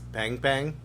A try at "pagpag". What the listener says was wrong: There's no N in it.